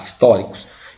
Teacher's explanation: uma proparoxítona porque ó é a anti penúria sear sílaba ó é sempre a anti penúltima sílaba que é forte